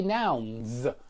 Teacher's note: Notice I say nouns and not nouns. Yeah, it's a Z, it's a voiced Z at the end of noun, and that's because N is a voiced letter